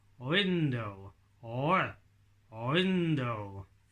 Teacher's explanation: I don't think there's very much movement in my lips at all